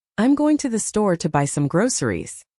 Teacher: The stress words are going, store, buy, and groceries. the unstressed words like I'm to that to and some are said very quickly and often reduced. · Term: stress timed language